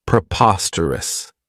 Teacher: This adjective has four syllables, and the stress is on that second syllable.